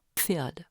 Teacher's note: L'accollement des lèvres, l'occlusion P, suivie du rapprochement des incisives supérieures et de la lèvre inférieure, la frication F, donne le Pf de l'allemand Pferd.